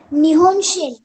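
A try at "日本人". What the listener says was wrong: शिन है क्या?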